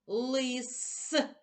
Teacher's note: останній звук у слові лис звук с твердий